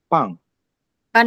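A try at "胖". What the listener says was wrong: Nada 1 panjangin. Pang. Santai, dia kayak slow gitu, mengalir. Pang gitu, kayak orang juga bisa. Tapi nadanya tinggi. Pang gitu.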